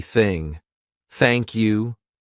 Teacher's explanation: the unvoiced th sound which means our vocal cords are not going to vibrate